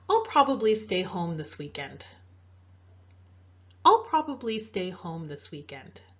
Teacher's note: You can hear how my voice gradually went down throughout that sentence.